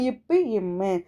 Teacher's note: 2 இதழ்களும் மேல் இதழும் கீழ் இதழும் பொருந்துவதால் பிறக்கக்கூடியதா